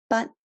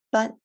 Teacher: It's the high tone number 1